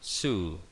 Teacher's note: es una S sonora, es decir, pronuncio S pero vibrando las cuerdas vocales, como si fuese una avispa o una mosca, de forma exagerada